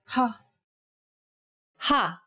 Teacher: saying this sound involves a forceful expulsion of air